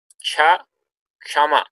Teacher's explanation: Ka and Sha, they actually make Cha.